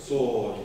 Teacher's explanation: don't be afraid to make that a really dark vowel